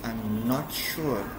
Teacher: the intonation is on not